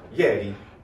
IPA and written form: jɛrⁱ (ieri)